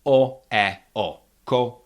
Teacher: There's no diminishing quality of the vowels in unstressed syllables.